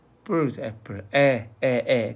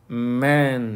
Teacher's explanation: 엠에서 이거 그다음에 얘는요 애인데요 입을 좀 양쪽으로 좀 길게 벌리는 애야.